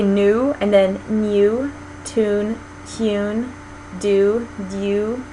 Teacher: Alright, other features, palatalization of the diphthong oo, which is the vowel in words like new, tune, and do. In British English, it's called palatalized because their tongue is sort of doing a little bit more at the hard palate. So if you say new and then new, tune, tune, do, dew, you can feel how your tongue is sort of rolling back off of the hard palate when you say it in the British way.